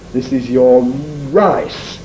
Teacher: the syllable final one with me it's very obvious visually because I have the Habit as many people do of lip rounding initial R · the syllable initial R tends to be made more strongly